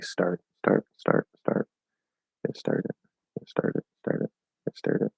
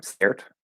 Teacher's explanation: the sound in start is ah. It's way back here.